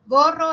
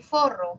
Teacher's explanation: K y Fa. Una es oclusiva y la otra es fricativa.